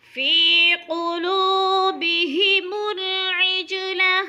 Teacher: قاف موٹے حروف میں سے ہے، پر کر کے پڑھنا ہے